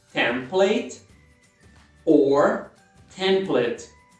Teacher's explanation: Só é importante você, de qualquer forma, fazer a sílaba tônica, a primeira sílaba.